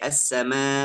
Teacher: Kalau hamz itu memang keluar ada hubungan yang paling kuat dengan pita suara. Kalau hamz sukun, 2 pita suara itu langsung tutup.